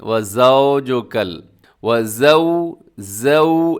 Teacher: زو ایسے آپ کے ہونٹ گول ہوں گے تو یہ معروف پڑھا جائے گا، ورنہ یہ مجہول ہو جائے گا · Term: واو لین